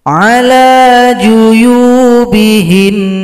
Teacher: Cara berhenti pada nun tasydid ini disukunkan, berikan bunyi dengungan.